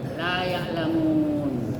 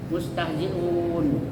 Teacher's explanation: ada mad tabi'i atau mad lin, ya, sesudahnya ada wakaf, tempat berhenti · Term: mad arid lisukun